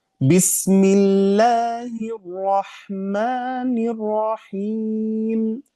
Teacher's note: Arrahman di dalamnya ada sifat tikrar ulang diulang hanya satu kali